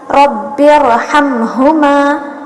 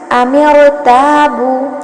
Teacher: اگر را ساکن سے پہلے کسرہ دوسرے کلمے میں آ رہا ہے تو تب را تفخیم کے ساتھ پڑھی جائیں گی یعنی موٹی، اور اگر را ساکن سے پہلے کسرہ اسی کلمے میں ہے تو یہاں پر را باریک پڑھی جائیں گی.